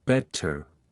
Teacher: Unlike American English, the t is pronounced crisply in British accents. Better is pronounced with a clear T like better. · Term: T sound